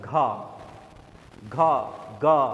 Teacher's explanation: यह ऐसे व्यंजन है जिनको आप बोलते हैं तो क्या एक कंपन एक धमक जैसी पैदा होती है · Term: घोष